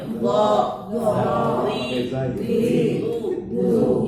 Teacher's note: kalau huruf zo masih ada desis burungnya itu berarti belum pas. Itu takarannya di situ.